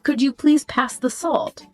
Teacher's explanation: That rising intonation at the end softens it.